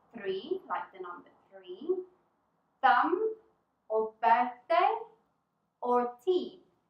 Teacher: the th is pronounced without the use of our vocal cords now put your tongue between your teeth like this and blow